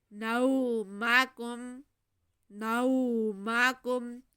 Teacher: نو کی آواز کو ناک میں نہیں لے کے جانا بلکہ منہ سے سیدھا باہر آنے دیں۔